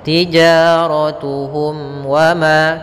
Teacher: Tijaratuhum wa ma, ada mim mati bertemu waw, kita namakan dengan izhar syafawi, yaitu bacaan yang dibaca dengan jelas mimnya. Kemudian pada wa ma ada fathah bertemu alif, ka ada fathah bertemu alif yaitu mad tabi'i.